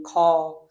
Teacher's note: দেখো প্রত্যেকটা উচ্চারণের সাথে কিন্তু শেষে কিন্তু অ এর একটা উচ্চারণ হয় আমাদের প্রত্যেকটা বর্ণের শেষে।